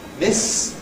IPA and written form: mɪs (miss)